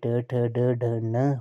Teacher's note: त्वर्ग में ट ठ ड ढ न हो गया आपका मूर्धा इसका उच्चारण स्थान है।